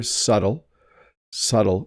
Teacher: there's no B happening here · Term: silent B